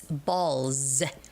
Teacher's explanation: And after the voice sound comes the s, then it has to be sounded as z.